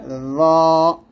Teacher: জিহ্বার আগা সামনের উপরে দুই দাঁতের আগার সঙ্গে লাগিয়ে মোটা করে